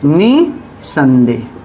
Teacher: अब ये नी पे हम अधिक बल देते हैं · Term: बलाघात या स्वराघात